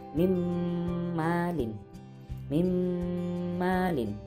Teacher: nun mati bertemu huruf mim, dibaca idgham bi gunnah, memasukkan dan dengung.